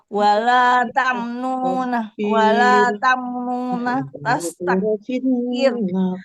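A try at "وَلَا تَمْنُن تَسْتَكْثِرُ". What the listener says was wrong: Bukan tamnuna Ibu. Bukan tamnuna. Tamnun. Taksir. Taksir.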